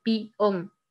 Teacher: cuando se dice peón, la E tiende a tener un efecto como la I o se escuche como la I. Es decir, se escribe peón, peón es la palabra, pero en el fonema se escucha de pión.